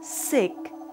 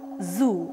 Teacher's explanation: Here, the main articulators involved are tip of the tongue and the front teeth. S as in word sick and Z as in word zoo are alveolar fricatives. The tip and the blade of the tongue is brought very near to the teeth ridge.